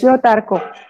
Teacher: The second vowel is dropped.